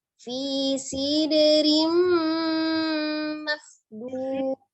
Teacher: untuk dalnya di tengahnya itu kolkolah ya, dia tapi sugro saja, jadi tidak terjeda